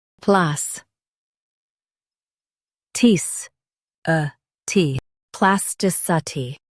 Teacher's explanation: Stress tis and keep a ti light.